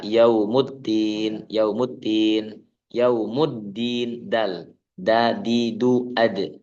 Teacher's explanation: huruf dal ini rawan kita membaca ee seperti ta